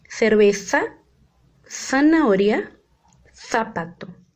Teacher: É um som interdental. É muito parecido com o nosso S, né?